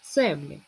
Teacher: паузу Давайте пограємо в гру добери перевірне слово наприклад слово земля перевіряємо щоб наголос впав на е